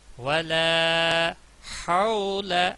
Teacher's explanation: واو کے ساتھ ملے گی، لام کے اوپر زبر ہے اور آگے الف خالی ہے یعنی الف مدہ کہلائے گا، 2 الف کے برابر کھینچنا ہے